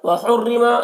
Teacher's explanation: यहाँ पर रौ को बारीक पढ़ेंगे